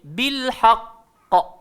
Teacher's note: huruf qaf ni kena lebih tekan dan jadi lebih sedikit lambat.